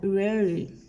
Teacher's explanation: tiene el sonido de I española cuando va al fin de la palabra